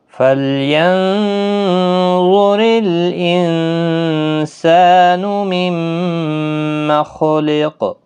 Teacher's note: نون ساکن پر اخفا ہوگا، ظا حروف مستعلیہ ہے، پر پڑھا جائے گا، را باریک ہوگا زیر کی وجہ سے، نون ساکن کے بعد سین آیا ہے، اخفا حقیقی ہوگا، سا الف مدہ بھی ہے، میم مشدد پر غنہ ہوگا، خا اور قاف دونوں حروف مستعلیہ ہے، پر پڑھے جائیں